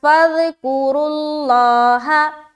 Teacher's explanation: را کو موٹا رکھتے ہوئے لفظ اللہ کو بھی موٹا رکھیں گے کیونکہ را کے اوپر پیش ہے